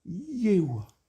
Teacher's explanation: Le nom de Dieu se dit comme dans un souffle. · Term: que des voyelles